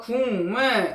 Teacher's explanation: 비음, 이응으로 바뀌었어요. 다시 비음이 아닌 기억이 비음인 미음을 만나서 비음인 이응으로 바뀌었습니다. 그래서 최종 발음은 국물이 되는 것입니다. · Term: 비음화